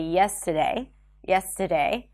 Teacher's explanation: You can drop the R in words like yesterday, and instead of saying yesterday, you can say yesterday, yesterday.